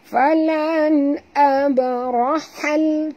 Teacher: alif lam qamariyah, bunyikan lam yang mati ni dengan jelas tanpa lantunan